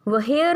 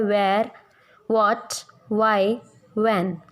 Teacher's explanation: As it is in वॉट, वाई, व्हेन. जितने भी WH family के वर्ड्स हैं उनमें H की साउंड नहीं होती, ओनली व की साउंड आती है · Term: साइलेंट H